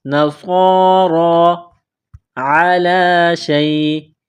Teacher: عین گلے کے درمیان سے زور لگا کر عین کو نکالیں گے۔ عین، عین زبر ع، لام کڑا زبر لا، کڑا زبر ہے، ایک الف کے لمٹ میں کھینچنا ہے۔